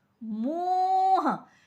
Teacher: गले से भी आवाज आ रही है और नाक से भी आवाज आ रही है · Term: अनुनासिक ध्वनि